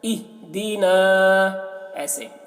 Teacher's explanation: یہ ہا حروف قلقلہ میں سے نہیں ہے تو ہا میں قلقلہ نہیں کرنا ہے